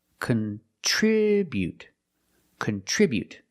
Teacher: Remember to put the stress on the second syllable.